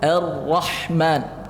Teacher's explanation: A-nya jelaskan, jangan tebal ke or-ra, enggak boleh. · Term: hamzah wasal